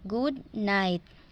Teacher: Good is normal tone, then it will rise good night, like creating a wave. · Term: wave tone